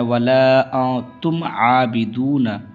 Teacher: میم ساکن کے بعد عین آ رہا ہے تو اظہار شفوی ہوگا، تو یہاں پہ بھی نون کو میم کو ظاہر کرنا ہے، ولا انتم عابدون، عین کو کھینچنا ہے، یہاں پہ واو مدہ ہے، سو کھینچنا ہے۔